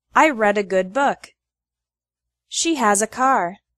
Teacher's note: the word ah often gets attached to the previous word for example I read a good book she has a car